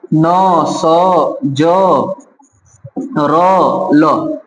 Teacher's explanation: न, स, ज, र, ल, इन पांचों को कहा जाता है दंत मूल व्यंजन या वर्ष तालव्य व्यंजन